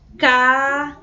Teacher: Observa que demora mais, o som ele é mais forte com o primeiro A, que acompanha a letra C, do que o A que acompanha o S. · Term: vogal tônica